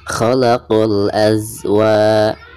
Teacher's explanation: Bacaan wa dibaca 2 harokat karena dihukumi mad tabi'i, karena ada fathah lalu berhadapan dengan alif.